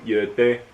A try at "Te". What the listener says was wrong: It's a T, not a D.